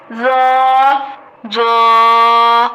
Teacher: ذو کو موٹا اور نرم دونوں طرح سے پڑھیں گے